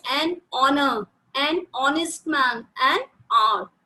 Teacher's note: though our first letter H is a consonant, but while pronouncing these words, H is silent